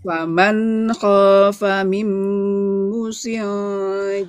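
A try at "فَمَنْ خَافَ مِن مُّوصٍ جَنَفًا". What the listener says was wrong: Munya panjang dong, pelan-pelan munya panjang.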